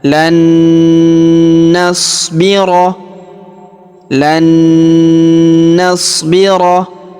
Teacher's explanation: Perhatikan huruf nun sukun bertemu huruf na yang berharokat tasydid, maka nun sukunnya melebur masuk ke huruf nun atau na yang berharokat tasydid ini. Kita tahan, kita tekan, serta kita dengungkan 2-3 harokat.